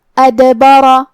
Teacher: با پہ اور را پہ زبر ہے، تو ہم یہ دونوں زبر کو برابر سے ادا کریں گے اور را کو موٹی آواز میں پڑھیں گے · کلمت ادبر میں یہاں حرف الدال ہے اور اس پہ جزم ہے، تو دال کا حکم ہے قلقلہ. قلقلہ کا معنی ہے حرف ساکن کو ہلانا، لہذا ہم حرف الدال کو ہلاتے ہوئے یہ کلمہ کو پڑھیں گے